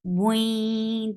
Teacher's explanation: You're merging the sound of tanween into ya, and you're keeping the sound in your nose. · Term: idgham with gunna